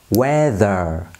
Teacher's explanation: Nhớ âm ơ ở phía sau, chúng ta cong lưỡi thì sẽ hay hơn.